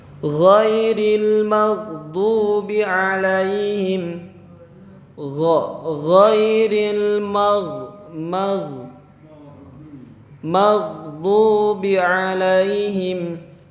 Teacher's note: Huruf gha ini tempatnya itu sama seperti huruf kha. Gha sama kha. Sama dari tenggorokan bagian atas.